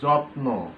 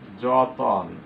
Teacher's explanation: মাঝখানে একটা অয়ের আগমন ঘটেছে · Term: মধ্য স্বরাগম